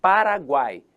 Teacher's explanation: Eu tenho a vogal no meio e as semivogais nas periferias. Paraguai, então temos semivogal, vogal e semivogal. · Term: tritongo